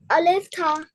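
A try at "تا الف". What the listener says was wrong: No, first read the two dots letter. Yeah, yeah has two dots in bottom and ta has two dots on top.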